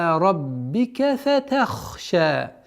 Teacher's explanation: Та мягкая, ха твердая.